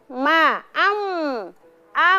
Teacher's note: huruf mim ya bertemunya antara kedua bibir ya dalam keadaan tertutup dengan ee menghasilkan ya atau keluar bunyi gunah atau dengung